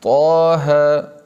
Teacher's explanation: بس ایک الف کی مقدار بڑھانا ہے، مد اصلی کرنا ہے